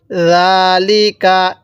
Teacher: জালের মধ্যে টান, লামের মধ্যে টান দিব না।